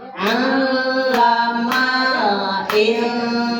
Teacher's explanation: Nah sama dengan itu ya ditasdid jadi al. Hati-hati di sini jangan amzah ya tapi ain.